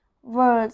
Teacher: I'm rolling my tongue to pronounce the sound of the letter R. World. So it's a very strong R sound.